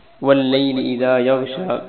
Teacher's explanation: وَاللَّيْلِ إِذَا يَغْشَى، واو کو لام کے ساتھ ملائیں گے، لام پر شد ہے اس لیے لام کو دو مرتبہ پڑھیں گے۔ یغشا غین کو موٹا پڑھنا ہے، شین پر کھڑی زبر ہے یغشا، اور یہ وقف اور وقف بیر جیسا پڑھا جائے گا۔